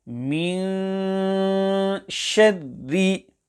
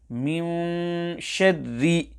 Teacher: Firstly, the lips must not meet, as if the lips will meet, it will create a sound of meme, when here the sound created must be of the letter noon. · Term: ikhfa of nun sakina